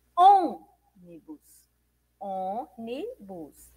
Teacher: Porque a sílaba mais forte é a antepenúltima. Veja só, ônibus, ônibus, tem 3 sílabas, ônibus. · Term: sílaba tônica